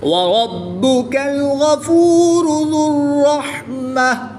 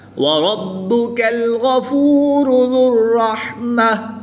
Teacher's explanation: را پر زبر ہے تو را کو پوری یعنی موٹا پڑھیں گے. با حروف قلقلہ میں سے ہے اور جب حروف قلقلہ مشدد ہوں تو ان میں قلقلہ خوب جماؤں کے ساتھ کرتے ہیں، اس کو قلقلہ کبریٰ بھی کہتے ہیں.